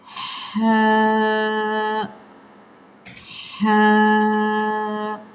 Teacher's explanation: رحمان ہوتا ہے، حمد ہوتا ہے، باریکی کے ساتھ، ٹھنڈا، نرم۔ ہا ہا، پہلے ہوا کی آواز کو آنے دیں، پھر آ کی آواز کو شامل کریں، بہترین ہا کی ادائیگی آپ سے ہو جائے گی۔